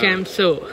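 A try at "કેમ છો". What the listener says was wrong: Cho, not So.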